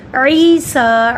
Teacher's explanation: عی کو لمبا کیا، جزم والی یا سے پہلے زیر ہے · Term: حروف مد